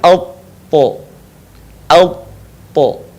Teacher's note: ketika kita melafalkan huruf to, posisi lidah bagian pangkal terangkat, bagian depan pun menutup bagian langit-langit.